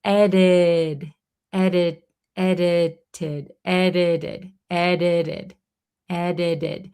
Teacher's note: So, when a T um, is usually surrounded by vowels, it's gonna sound like a flap T, like a D almost. So in when we pronounce it, it sounds like there's three D's in the word edited. · when we pronounce it in American native speed English, this T in the middle becomes a flap T. So when a T is usually surrounded by vowels, it's going to sound like a flap T, like a D almost.